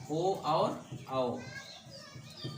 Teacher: कंठ और ओष्ठ से बोले जाते हैं ओ और औ। ओ और औ, ये दोनों कंठ ओष्ठ से, दोनों मिला के कंठोष्ठ। · कंठोष्ठ, कंठ और ओठ दोनों का प्रयोग इसमें होता है।